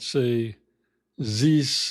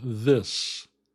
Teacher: you might say ze instead of this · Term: th pronunciation